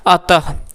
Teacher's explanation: इसका उच्चारण ह की भांति किया जाता है। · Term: विसर्ग